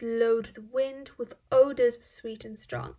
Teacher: Notice the sibilant sound there, the repetition of the S sound, and it really creates a calm and gentle feeling.